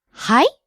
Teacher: If you use it with rising intonation hi it turns it into a question like excuse me or I'm sorry.